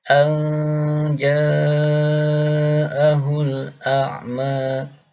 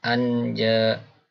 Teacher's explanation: huruf nun yang dibaca ikhfa, dibaca samar. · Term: nun al-mukhfah